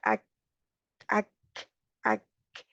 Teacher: काफ के लिए ज़ुबान की जड़ ऊपर तालु की तरफ उठती है